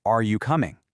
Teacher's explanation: if your voice rises at the end, those exact same words suddenly become a question